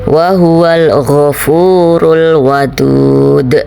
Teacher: jadi Qalqalah karena di akhir jadinya Qalqalah Kubro jadi qalqalahnya pantulannya lebih jelas lebih besar